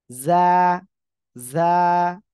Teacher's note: জিহ্বার আগা সামনের নিচের দুই দাঁতের পেট ও আগার সঙ্গে লাগাবেন লাগিয়ে অক্ষরটা উচ্চারণ করতে হবে